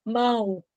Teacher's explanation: Quando o O tem som de U, ele é semivogal.